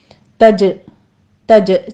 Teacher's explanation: تجری میں جیم کے اوپر ہم قلقلہ کریں گے اور یہ قوی ہوگا قلقلہ، اس کو آپ نے تج ہمس نہیں لے کر آنا، ٹھیک ہے.